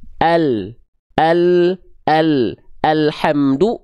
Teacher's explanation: jadi tepi lidah bagian depan ya yang kanan beserta yang kiri oke ya keduanya menyusur sampai ke ujung lidah begitu untuk disentuhkan ke langit-langit di atasnya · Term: huruf lam